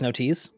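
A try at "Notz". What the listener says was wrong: so here's a nice tidbit of German for you. A Z is pronounced like TS, so it's no teats.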